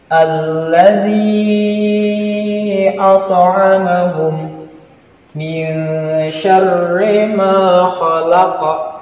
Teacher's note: harus dibaca pantul, namun tidak pantulannya itu besar, tapi pantulannya itu cukup kecil saja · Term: qalqalah sugro